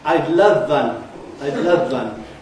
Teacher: they've let the V at the end of love contaminate the W at the beginning of one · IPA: /aɪd ˋlʌv vʌn/